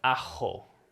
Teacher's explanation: in spain they might say it more like ah-ho it's it's in the throat